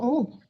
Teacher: Muah itu kalau untuk kecil baru muah ya. Jangan muah lagi, tapi muh benar-benar ke u ya.